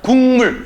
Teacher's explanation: 기역은 이응으로, 디귿은 니은으로, 비읍은 미음으로 변하는 현상을 우리는 첫 번째 비음화 현상이라고